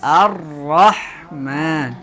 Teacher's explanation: ra juga harus dibaca agak tebal ya, karena di sini dia berbaris fathah, ya. Kalau kasrah dia dibaca tipis, ya.